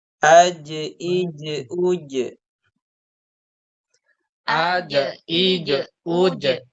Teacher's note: Jadi huruf jim ini sama dengan huruf qaf ketika sukun harus dipantulkan ya. · Dan jim ini sama juga dengan huruf qaf, yaitu huruf yang tertahan ya, baik dari segi nafas atau dari segi suara. Huruf jim itu tidak mengalir ya. Tidak mengalir nafasnya, tidak juga mengalir suaranya.